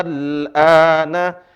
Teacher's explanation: Seharusnya dua, tapi karena bertemu dengan lam sukun dibaca al-ana, dibaca 6 harokat. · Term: mad lazim